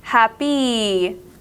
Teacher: this word sounds like it's spelled with a double e at the end a long long e